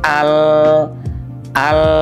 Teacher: Tahan ujung lidah kita ini di tempatnya, di makhrajnya, yaitu di langit-langit.